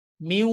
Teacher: যে নুন সুকুনের পর নুন সুকুনের পরবর্তী হারফটাই হচ্ছে ওয়াও কারণ ওয়া উচ্চারিত হয় ঠোট গোল হয়ে